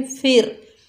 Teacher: फा के नीचे ज़ेर, आगे रॉ साकिन है, ज़ेर की वजह से रॉ को बारीक पढ़ेंगे